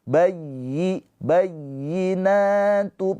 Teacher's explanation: ya yang bertasydid ditekan bayyi bayyinatum na panjang dua harakat.